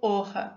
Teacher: Sobre o ponto de articulação uvular, o articulador ativo é o dorso da língua e o articulador passivo, o véu palatino e a úvula.